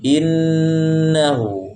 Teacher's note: Huruf yang bertasydid adalah huruf nun yang bertasydid adalah huruf gunnah, ya. Lebih-lebih itu nun bertasydid, maka panjangkan gunnahnya. Jangan tergesa-gesa.